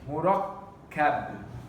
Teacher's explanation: when the Arabs, when they stop on the word, they don't pronounce the tanween